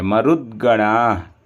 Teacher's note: यहाँ पर द आधा है इसलिए मरुद्गणाः, द को जल्दी बोलेंगे